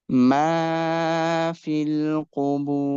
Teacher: Fil, we will not stretch it, but we will stretch the ba sound. Qubur, when we stop on this ra, because it's having dhamma before it, its sound will be bold